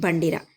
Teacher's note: నాలుక కొన అనేక సార్లు దంత మూలమునకు కంపింప చేయుట వలన పుట్టేది. కరణమైన జిహ్వాగ్రం నోట్లో అనేక సార్లు కంపించడం వల్ల పుట్టేదే కంపితం